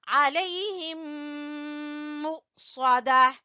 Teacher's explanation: یہاں پہ ادغام شفوی ہے، میم کے بعد میم ہے، علیہم مؤصدہ، حمزہ کے اوپر جھٹکا دیں گے، مؤصدہ، صاد کو پر پڑھیں گے۔